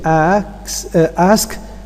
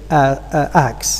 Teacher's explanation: common process we can also talk about metathesis which is the the change of the order of two segments in the same word